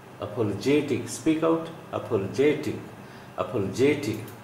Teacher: Primary stress is on j sound, not on pa.